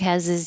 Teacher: This pronoun his with an H can disappear, and then we can connect the previous consonant to the I is. So it will sound like has is.